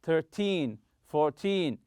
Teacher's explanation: when using these words to talk about quantity time or money stress the second syllable so in team numbers when you're talking about quantity money or